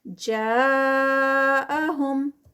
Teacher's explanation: جا پہ بھی مد متصل 4 کاؤنٹس والی